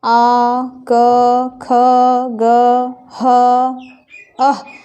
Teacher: इन वर्णों का उच्चारण करने में कंठ पर ज़्यादा बल पड़ता है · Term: कंठ्य वर्ण